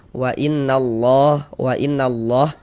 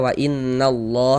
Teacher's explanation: Maka kalau ada lafaz Allah sebelumnya ada tanda baca fathah maka lafaz allahnya dibaca tafkhim dibaca tebal huruf lam jalalahnya